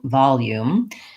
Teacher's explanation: I find that I say this word with the oo vowel. I do have a tense, clear vowel